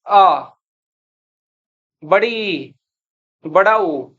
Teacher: यानी इनके उच्चारण में दो मात्रा काल का समय लग रहा है। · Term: दीर्घ स्वर